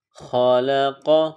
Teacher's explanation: قاف زبر قا، خالق. قاف کو موٹا پڑھیں گے.